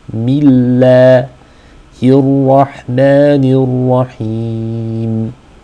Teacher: The lam in the word Allah is light because it is preceded by a kasra under the meme.